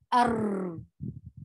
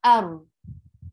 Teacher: If we leave a little gap between our tongue and our gum, the ra will not get extra vibration. It will be ar.